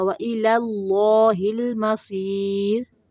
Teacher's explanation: پہلا لام باریک ہے اور دوسرا موٹا